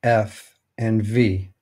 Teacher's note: First, we see the labiodental fricatives F and V.